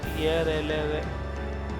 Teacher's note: ये व्यंजन 4 प्रकार के होते हैं, जैसे य, र, ल, व। इनका उच्चारण जीभ, तालु और होठों के परस्पर सटाने से होता है, किंतु कहीं भी पूर्ण स्पर्श नहीं होता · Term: अंतस्थ व्यंजन